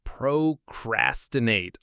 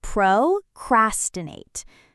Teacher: The cras part is the one that gets the most weight.